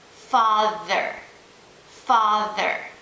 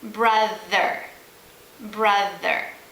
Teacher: Brother has the TH digraph in the middle of the word. And brother is also an example of the TH digraph using your voice